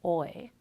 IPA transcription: ɔɪ